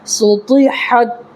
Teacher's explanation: سین پیش سو، طا زیر طی، سطی، حاتا زبر حد، سطحت، طا نکالنا ہے تا نہیں ہے طا، تھوڑا پر کر کے نکالنا ہے